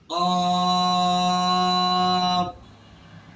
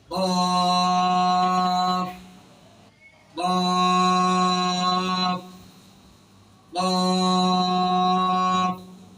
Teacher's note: এই হরফটির নামে শুদ্ধ উচ্চারণ করতে হলে জিহ্বার গোড়া তার বরাবর উপরের তালুর সঙ্গে লেগে এই হরফটি মোটা আওয়াজে উচ্চারণ হবে · উপরের দাঁতের আগা নিচের ঠোঁটের পেটের সঙ্গে লেগে উচ্চারণ শেষ হবে। কফ। দুই ঠোঁট একসঙ্গে মিলবে না, খেয়াল রাখবেন।